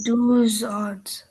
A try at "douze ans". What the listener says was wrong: perfect. Okay, but it won't be os, it will be on, that's all. Okay, so you will say j'ai 12 ans.